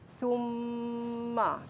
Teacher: kita kena dengungkan dekat mim tu. Summa 2 harakat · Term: wajibul ghunnah